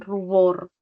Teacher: La U es considerada entonces una vocal alta posterior. Alta y posterior.